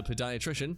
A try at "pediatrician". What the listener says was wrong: It's a pediatrician. Pediatrician, not podiatrician.